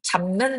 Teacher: 뒤에 오는 니은에 영향을 받아 잡는 비읍이 미음으로 바뀌는 현상이 나타나고 있죠. 이것이 바로 비음화입니다.